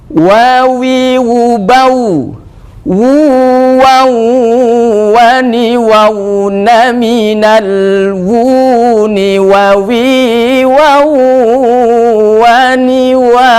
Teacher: Ini adalah makhraj kedua bibir yang disebut syafatain